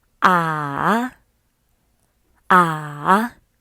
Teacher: the third tone is a special one this tone goes down first and then rises